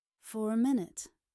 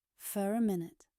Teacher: when the next word begins with a vowel sound, for connects smoothly.